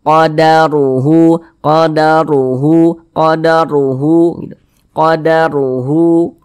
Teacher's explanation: Huruf ra-nya itu kita tebalkan. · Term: tafkhim